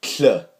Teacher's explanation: a small T sound followed by an unvoiced alveolar lateral fricative